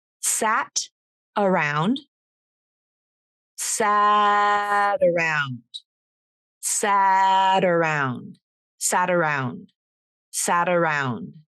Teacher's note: we're linking the t consonant uh using the flap